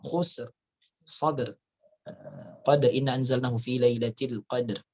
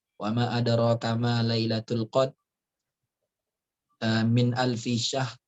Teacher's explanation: Ini semuanya ini surah Al-Asr ya sama surah Al-Qadr ini semuanya ada ro di akhirnya. Ya, maka tajwidnya dia tebal tapi dalam prakteknya dia tidak dibaca secara jelas banget, kecuali kalau sambung ya. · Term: Tebal tapi tidak dijelaskan